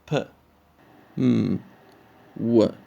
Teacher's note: bilabial, the use of the 2 lips to produce sounds like p, m, w